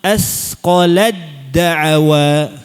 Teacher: Harus ditekan mahrajnya langsung ke sifat huruf dal. Ya. Sifat syiddahnya.